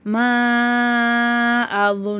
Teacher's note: மீம் அலிஃப் மேல வந்து சின்ன மத் இருக்கு மூணுல இருந்து நாலு அலிஃப் வரைக்கும் நம்ம நல்லா நீட்டி ஓதணும்